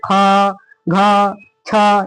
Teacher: अधिक सांस लगता है उसको क्या बोलते हैं? उसको हम लोग महाप्राण बोलते हैं।